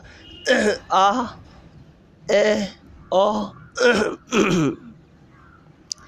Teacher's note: विवृत स्वर, इन स्वरों के उच्चारण में जीभ तालु से सबसे दूर प्रतिस्थापित हो जाती है। आप देखो, आ बोलते हो जब, तब आपका तालु जो होता है मुंह ऊपर की तरफ उठ जाता है, तालु वाला भाग ऊपर वाला, और इसमें जीभ जो है वो नीचे की तरफ आती है।